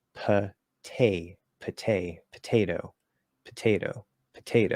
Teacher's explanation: It's the stress of the syllable and the fact that a stop sound, a t, p, or k, is at the start of that stress that makes it strong. So when we say potato, that first P is a strong P. That first T in the middle of the word is also a strong T.